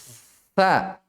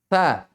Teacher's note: di ujung lisan bertemu dengan ujung dua gigi atas